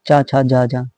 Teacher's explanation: चा किससे बोला जाता है, तालु से बोला जाता है। आंसर हमारा क्या होगा, तालब। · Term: तालब्य